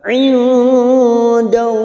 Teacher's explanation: lam jalalah yang didahului fathah, kita baca tafkim